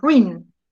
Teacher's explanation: Cuando hay dos vocales cerradas, por ejemplo, ruin, ¿ve? La U y la I, se juntan, y ruin, lo digo en un solo golpe, ruin. Como lo digo en un solo golpe, ruin es un monosílabo.